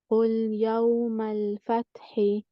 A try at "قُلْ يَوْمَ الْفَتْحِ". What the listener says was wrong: Very good, mashallah.